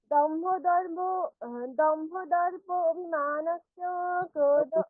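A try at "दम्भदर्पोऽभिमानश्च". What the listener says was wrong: দর্প নয়, দম্ভ ওকারটা তো দীর্ঘ। দম্ভ দর্পোভিমানশ্চ। আস্তে আস্তে বলুন, তাহলে ভালো লাগবে। অভিমান, ওখানে অকারটা মানে লুপ্ত হয়ে আছে, তার জন্য ওর উচ্চারণ করা যাবে না। দম্ভ দর্পভিমানশ্চ এরকম বলতে হবে, বলুন।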